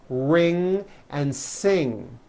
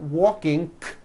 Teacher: the NG sound. Ing comes out of your nose. It's a combination of an N and a G, and it is found at the ends of words like ring and sing.